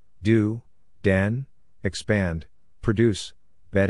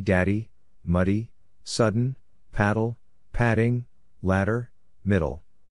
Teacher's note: The glottis is in the vibrating mode when slash D slash is made.